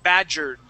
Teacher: if it has an R, we're going to jump from that R sound straight to only a D sound.